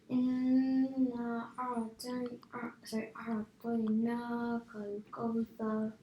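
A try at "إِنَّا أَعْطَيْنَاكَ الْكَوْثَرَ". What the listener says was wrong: Try and do the mud a bit longer. And just one thing could be slightly better is the Kawthar. So ka is a fatha, isn't it? So you can't make it full mouth. So you can't say Kawthar, ko. Has to be kaw.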